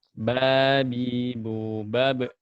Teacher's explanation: Ba menggunakan 2 buah bibir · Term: huruf ba